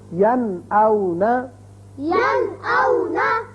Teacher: نون ساکن کے بعد حمزہ آ گیا، لہذا نون کو ظاہر کر کے پڑھیں گے